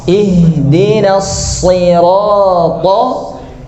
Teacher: ta-nya tebal, lamnya tipis